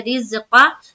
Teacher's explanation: جیسے رز۔ اب دیکھیں یہاں پر را کے نیچے زیر ہے، تو را کو جب ہم زا سے ملائیں گے تو را کو باریک رکھنی ہے · قاف کے اوپر زبر کی حرکت ہے، زبر کو جلدی پڑھیں تھوڑا بھی نہ کھینچے